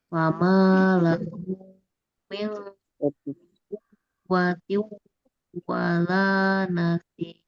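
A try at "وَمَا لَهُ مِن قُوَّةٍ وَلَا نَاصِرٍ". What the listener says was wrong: Nasir, anaknya panjang Bu. Nasir. Jangan panjang, hati-hati. Sir. Sir. Nah, apa dipendekkan saja, Bu?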